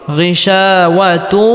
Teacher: বাগুন্নার হরফ ওয়াও আসার কারণে এখানে ইদগামে বাগুন্নাহ করে পড়তে হবে অর্থাৎ তানবিনকে ওয়াওয়ের সাথে গুন্নাহের সাথে মিলিয়ে পড়তে হবে